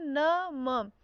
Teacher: इसको बोलने में नाक से वायु निकलती है, ठीक है, इसलिए इसे नासिक व्यंजन कहते हैं